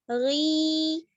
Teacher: یا مدہ ہو جائے گا کیونکہ یا ساکن ہے اس سے پہلے زیر کی حرکت ہے, تو اس کو تھوڑا سا ہم کھینچیں گے